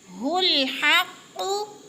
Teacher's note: फयअलमून अन्नहुल हक़्क़ु, अन पे गुन्ना हो रहा है, नून मुशद्दद है सख्ती से, हुल हक़्क़ु पहला हा मोटा, हक़्क़ु का हा बारीक है, हलक से निकालेंगे, हक़्क़ु क़ाफ मोटा, अन्नहुल हक़्क़ु मोटे हरूफ 7 हैं, ख़ा क़ाद ग़ात ता ज़ा ग़ैन क़ाफ।